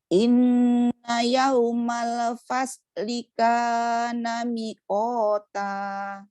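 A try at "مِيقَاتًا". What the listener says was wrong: Mi-nya panjang.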